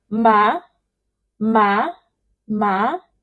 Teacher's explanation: the second tone is the rising tone. Like when you say yes when somebody call you say yes.